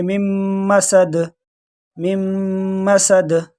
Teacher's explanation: دال کو تھوڑے جھٹکے کے ساتھ پڑھیں گے